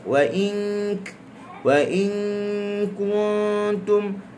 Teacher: Kaf dia berada jauh daripada makhraj nun, dengun dia kurang.